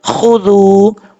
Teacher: خا حروف مستعلیہ میں سے پر پڑھیں گے, آگے واو مدہ ایک الف کی مقدار لمبا کر کے پڑھا جائے گا